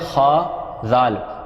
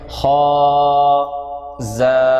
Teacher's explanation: ذال کے اندر سیٹی نہیں آتی، اس کا مخرج میں نے آپ کو بتایا تھا، اسی تلفظ کے ساتھ پڑھتے ہوئے انشاءاللہ العزیز اس کو آپ پڑھیں گے تو یہ آسانی سے آپ کے ادا ہو جائے گا کہ آپ نے زبان کا کنارہ اوپر وردتوں کے کنارے پر لگانا ہے۔